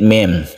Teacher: ini kita dengungkan karena mim bertemu dengan mim membentuk tasydid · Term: Idgham Mimi